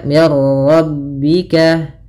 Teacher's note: Berarti hanya idghamnya saja. Idgham itu memasukkan, maka masukkan nun ke ra sehingga suara nunnya hilang. Nah, di sini idghamnya idgham kamil. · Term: Idam tanpa disertai dengan gunah